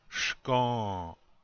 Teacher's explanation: It's like you don't say the complete sound of the N, but you start to say it and then you stop. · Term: nasal